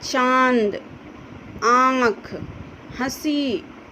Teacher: नाक और मुंह दोनों से इसका उच्चारण होता है